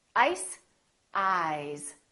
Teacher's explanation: the vowel that comes before the voiced sound is longer